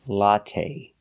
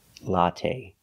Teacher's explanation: The last syllable is the long A. It's not stressed, but we use the long A like say and pay.